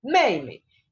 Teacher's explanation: en esta palabra el énfasis de la pronunciación recae en la primera sílaba porque es la que tiene el tono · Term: tono neutro